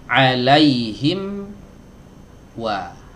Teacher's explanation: Kalau huruf wawu diiringi dengan memajukan bibir. Nah, jadi membulat sebenarnya, bukan rapat tapi dia membulat, ya.